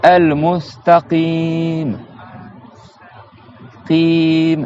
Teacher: Il y a un ta normal, par contre, il y a un qaf à la fin, qu'on doit prolonger.